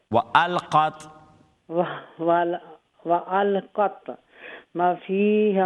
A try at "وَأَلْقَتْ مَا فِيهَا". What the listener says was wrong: نہیں وألقت ما فيها. ما نہیں میم کے بعد نہیں زارا جی دیکھیے وألقت کے بعد میم کے بعد الف مدہ ہے. وألقت ما.